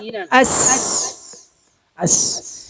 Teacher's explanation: സീന് നമ്മൾ ഉച്ചരിച്ചപ്പോ നമ്മൾ നാവ് പരത്തിയാണ് വെച്ചത്. നാവിന്റെ പിൻഭാഗം ഉയർത്തിയിട്ടില്ല. അതുകൊണ്ടാണ് അസ് എന്ന ശബ്ദമായത്.